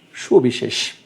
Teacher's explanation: ঠিক সবিশেষ শব্দটি লক্ষ্য করে তোমরা, দন্ত স আছে, তালব্য স আছে, মূর্ধন্য স আছে, তিনটা স আছে, কিন্তু উচ্চারণের সময় আমরা করছি কি তিনটাই তালব্য সর মতো করে করছি। উচ্চারণটা তার এরকম হবে যে সবিশেষ, তিনটাই তালব্য স।